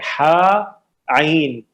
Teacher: ہا اور عین بالکل درمیان حلق سے, ہا عین, یہ دونوں لائٹ لیٹرز ہیں, مرقق ہے, ہلکے ہیں, موٹے نہیں ہوتے, صحیح جی.